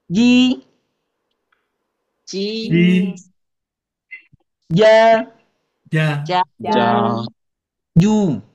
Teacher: huruf jim ini keluarnya dari tengah-tengah lidah. Ya, ja sama dengan huruf ya.